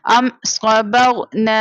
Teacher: اب یہاں پر میم ساکنہ کے بعد نہ نیکسٹ لیٹر با ہے نہ میم ہے، اس کے علاوہ لیٹر ہے، جیسے یہاں پر صاد ہے، یہاں پر اظہار شفوی ہوگا یعنی بغیر غنہ کے پڑھیں گے